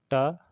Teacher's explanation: मूर्धन्य भी है और अल्प्राण भी है और अघोष भी है